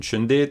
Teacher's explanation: Latin s changed to sh in all early loanwords